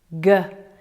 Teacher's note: The back of the tongue and the soft palate. G is voiced.